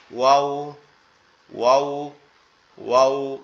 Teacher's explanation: ওয়াওটা উচ্চারণের সময় আমাদের দুই ঠোঁট গোলাকৃতি ধারণ করবে, করে আওয়াজ হবে এরকম ওয়াও, ওয়াও, ওয়াও, এরকম ভাবে।